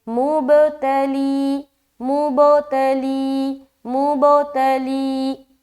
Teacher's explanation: اس کے بعد تلیکم، تا زبر تا، لام یا زیر لی، تلی، کاف میم پیش، کم، یہاں پر تا کو ہم جل پڑھیں گے اور لی میں یا مدہ کریں گے، یا ساکن سے پہلے زیر ہے تو یہاں پر ہم ایک الف کھینچیں گے